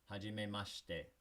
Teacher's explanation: In Japanese, sometimes when you see the shi sound like you do over here, it's going to sound like sh instead of shi